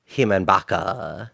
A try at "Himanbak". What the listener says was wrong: Not Baka. Bak. That's Bak. You say Bak. You don't say Baka. It is not Baka.